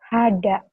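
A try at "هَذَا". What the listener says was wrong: Haza. Bukan hada. Haza. Agak rapuh dikit. Haza.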